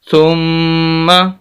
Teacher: میم مشدد 2 مرتبہ پڑھی جائے گی، اور سخت کر کے پڑھیں گے، اور یہاں پر غنہ بھی کریں گے ۔ غنہ کہتے ہیں ناک میں آواز لے جانے کو، غنہ